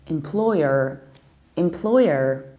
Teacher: And in the American accent, we say employer, so we have M, we stress second syllable, and we articulate relatively strongly final R